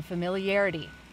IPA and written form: fəmɪliˈærəti (familiarity)